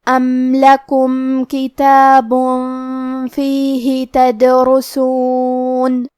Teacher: را پہ پیش ہے تو یہاں را کا حکم ہے تفخیم، ہمیں حرف الرا کو موٹی آواز میں پڑھنا ہے